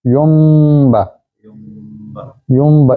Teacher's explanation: نون کی آواز میم میں بدل جائے گی، پھر نون نہیں پڑھیں گے، میم پڑھیں گے، دونوں ہونٹ بند ہو جائیں گے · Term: اقلاب